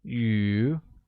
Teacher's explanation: fish becomes 鱼 and is pronounced with a mid-rising tone